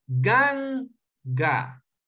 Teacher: Gan es la penúltima y también en este caso es la primera porque solo tiene dos sílabas. Entonces usted va a acentuar en la penúltima, no al final. Entonces usted dice ganga.